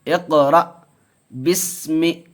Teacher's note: تو اس کو پڑھیں گے اقرا، اقرا نہیں پڑھیں گے، اقرا. قلقلہ ہوگا، کاف حروف قلقلہ میں سے ہے اور اس کے اوپر جزم ہے، تو پڑھیں گے اقرا بسم.